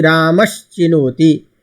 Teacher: तो चवर्ग के योग होने से जो स है उस स के स्थान में परिवर्तन क्या हो जाएगा? श।